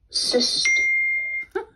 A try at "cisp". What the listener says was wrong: I keep hearing a t sound instead of a p sound. Cisp.